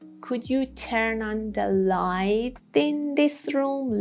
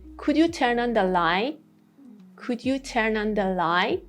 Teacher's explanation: Light, held T. But because of E sound, after T, it becomes a flap T.